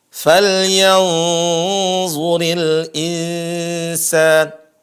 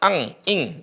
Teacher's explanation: nun bertemu dengan za, suara nun disembunyikan, disamarkan mengarah kepada makhraj za. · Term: ikhfa